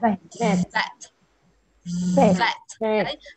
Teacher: Là môi không chạm vào răng. Thì âm này nó sẽ tạo ra bởi môi và răng.